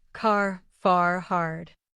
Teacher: in American English, we often pronounce the R clearly at the end of words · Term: clear R sound